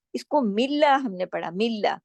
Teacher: क्योंकि जेर, जब अल्लाह के नाम से पहले जेर आ जाए तो फिर उसमें लाम मोटा नहीं होता